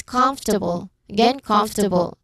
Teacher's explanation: the rule says third syllable from the end and that's com